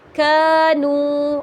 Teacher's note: الف مدہ کو بھی ہم کھینچیں گے اور واو مدہ کو بھی ہم کھینچ کر ہی پڑھیں گے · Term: حرف مدہ